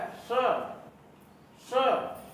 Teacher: और जब हम श का उच्चारण करते हैं तो हल्की सी सीटी की आवाज आती है, श श। ये तालु का जो उभरा हुआ भाग है वहां से उच्चारण होता है